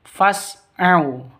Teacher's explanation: Au sifat lin, lentur, lemes, tidak boleh disentak, tidak boleh dipanjangkan.